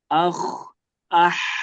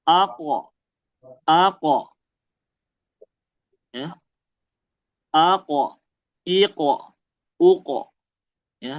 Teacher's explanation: Akh ah itu kan ngalir ya. Kalau qof, nah dia enggak mengalir tapi memantul ya. Jadi bukan a bukan dialirin qofnya.